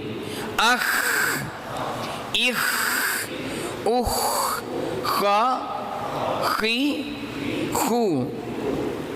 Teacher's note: جب آپ پڑھیں تو ہوا خارج ہو اور اس پہ قلقلہ نہ ہونے پائے۔ اخ یوں نہ ہو، اخ آپ کو محسوس ہو رہا ہے؟